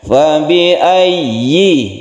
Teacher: ya-nya yang bertasydid kemudian ya-nya yang berkasroh, ini harus jelas tasydid dan kasrohnya